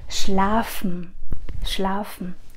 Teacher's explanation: SCH chúng ta uốn cong lưỡi lên